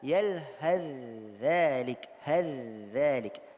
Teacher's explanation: Tha-nya sudah didghamkan ke dalam huruf dha dan hubungannya adalah tajanus.